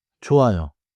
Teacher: In standard Korean, the polite ending is 요, with rounded lips.